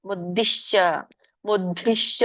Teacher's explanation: ದ ವತ್ತಿದೆ ಬಟ್ ಮಹಾಪ್ರಾಣದ ದ ಇಲ್ಲ